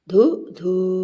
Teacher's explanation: ദീർഘമായി വായിക്കണം നീട്ടി വായിക്കണം ഇരട്ടക്കുനിപ്പിടുമ്പോൾ